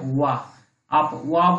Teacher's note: ऊपरी सतह की जो दांत है और आपका होंठ आपस में जब बिल्कुल मिल जाते हैं तब वह की ध्वनि उत्पन्न होती है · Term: दंत ओष्ठ